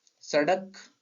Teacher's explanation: ड़ और ढ, जब हम इनका उच्चारण कर रहे होते हैं तो हमारी जीभ का अग्रभाग झटके के साथ नीचे गिरता है। यदि आप सड़क को बोलेंगे तो एक झटके के साथ इसका प्रोनाउंसिएशन होगा, जीभ बाहर नीचे गिरेगी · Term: उत्क्षिप्त व्यंजन